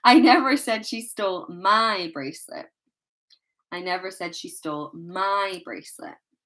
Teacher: the emphasis, the stress is on my. I never said she stole my bracelet.